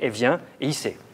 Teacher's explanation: Dans la langue familière, il, le L, tombe dans les pronoms il et elle devant consonne. Elle vient et il sait sont prononcés, elle vient et il sait. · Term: la chute du L